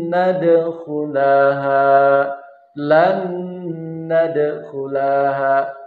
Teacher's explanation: nun yang pertama ini bertemu dengan nun yang bertasdid, jadi lebur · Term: idgham mutamasilen